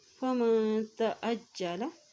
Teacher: جیم کے اوپر شد ہے اس لیے عین کی زبر کو جیم کے ساتھ ملائیں گے